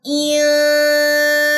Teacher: الف مدہ ہے، 2 سیکنڈ کے لیے آپ نے اس کو لمبا کرنا ہے · غنہ کریں گے. نون ساکن کے بعد سین ہے، اخفاء حقیقی ہوگا